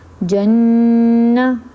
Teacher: میں نے نون کی آواز کو لے کے گئی تھی ناک میں اور زبان تالو سے لگی تھی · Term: غنہ